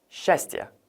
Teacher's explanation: сч가 나란히 있을 때는 сч로 발음할 경우가 하나도 없고 무조건 항상 시 발음으로 발음됩니다